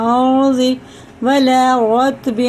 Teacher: زبر اور پیش کے ساتھ را ہوتی ہے تو پور ہوتی ہے، یعنی منہ بھر کے موٹا کر کے پڑھنا